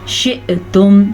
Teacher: हमज़ा के ऊपर साकिन है तो हल्का सा झटका पैदा होगा